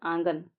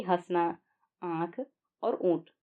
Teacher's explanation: आंगन को बोलते समय हम मुंह के साथ-साथ नाक का भी इस्तेमाल करते हैं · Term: अनुनासिक स्वर